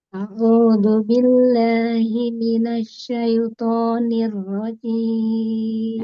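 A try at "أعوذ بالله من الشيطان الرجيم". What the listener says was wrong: Nah, baik dia to-nya tebalkan ya. Syaitonir rajim.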